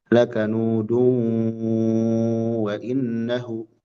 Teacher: Ini ada tanwin menghadapi wawu, ada idgham bi gunnah.